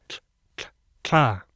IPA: tɬ